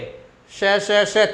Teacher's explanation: अघोष वर्ण हो गए। इसमें स्वर तंत्री में कंपन नहीं होता है। 2 बातें, अघोष वर्ण में पहला दूसरा और तीनों शकार, तो यहाँ स्वर तंत्री में कंपन नहीं होता।